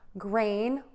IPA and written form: greɪn (GRAIN)